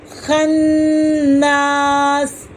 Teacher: خنا، الف سے پہلے زبر ہے، ایک الف کے برابر کھینچیں، سین کی زیر کو ڈراپ کر دیں، اس کو ساکن پڑھیں گے